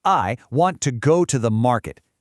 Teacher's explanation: The important words, want, go, market. They pop. The other little words just get us there. That right there is sentence stress in action.